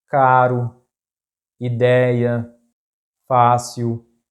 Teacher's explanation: Paroxítonas, words in which the stressed syllable is the penultimate or the second to last.